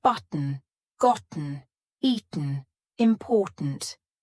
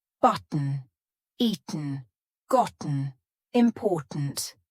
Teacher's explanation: do you notice that my throat is stopping that t sound in the middle of the word listen again button eaten gotten important here my throat is doing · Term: glottal T